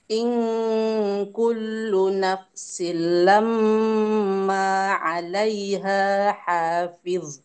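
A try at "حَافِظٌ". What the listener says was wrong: Fid agak tebal Bu.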